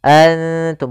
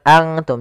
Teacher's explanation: Karena dia ikhfa itu menyamarkan huruf kepada huruf setelahnya. Yaitu nunnya disamarkan kepada huruf ta. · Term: ikhfa aqrab